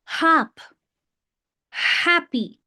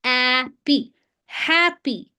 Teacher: this sound of H doesn't have anything to do with our vocal cords